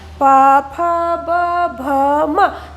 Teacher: आगे देखेंगे प फ ब भ म, जब हम प फ ब भ म का उच्चारण करते हैं तो जो ओठ है ओठ का ही यूज किया जाता है। दोनों ओठ प फ ब भ म बोलने से दोनों ओठ एक दूसरे को स्पर्श करते हैं, इसीलिए इसे ओष्ठ्य वर्ण कहा जाता है।